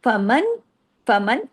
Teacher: फमन फमन अब ये देखिए पूरा इज़हार हो रहा है। मन कोई गुना नहीं है। नून की आवाज पूरी-पूरी आ रही। खुल्लम खुल्ला इज़हार हो रहा है। · چلیے، فمن، فمن، اب یہ دیکھیے پورا اظہار ہو رہا ہے، من کوئی غنہ نہیں ہے، نون کی آواز پوری پوری آ رہی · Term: اظہار ہلکی